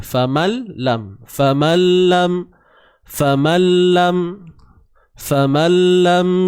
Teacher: idgham memasukkan bunyi nun ke dalam lam tanpa dengung. Sebab tu kita tak dengar dah bunyi nun tu. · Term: idgham bila gunnah